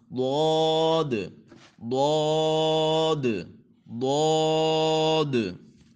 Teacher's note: ٹھیک ہے، زبان کی ایک کروٹ اور اوپر کی داڑھوں کی جڑ سے، اوپر والی جو داڑھ ہے اس کی جو جڑ ہے وہاں پہ زبان کی کروٹ لگے گی